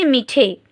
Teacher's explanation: ই এর প্রভাবে এই আ টা চেঞ্জ হয়ে কিসে পরিণত হচ্ছে এ তে পরিণত হচ্ছে তাই আমরা উচ্চারণ করছি মিঠে এটা আমাদের বাকযন্ত্রের সহজ প্রয়াসে উচ্চারিত